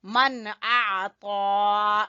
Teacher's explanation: یہاں پہ اظہار ہے، کچھ غنہ نہیں کرنا۔ من اعطا، اعطا، گلے کے درمیان سے حصے سے عین، تو پر پڑھیں گے اس کو۔